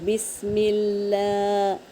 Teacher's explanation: تشدید ہے تو کھڑا زبر کو ایک الف کے مقدار کھینچیں گے اور لام کو 2 بار پڑھیں گے، بسم اللہ۔ اب لا بول کے رکیں گے، ایک الف کے برابر ہے نا، کھینچنا ہے نا، تو اس طرح رکیں گے، بسم اللہ۔